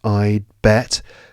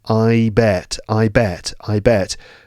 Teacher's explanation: The tongue is not going into position because there's no D. I bet. And I'd bet is probably completely inaudible, except there's maybe a slight pause.